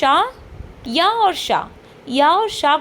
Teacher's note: श य और श को जब हम बोलते हैं तो उनका भी उच्चारण तालु की सहायता से होता है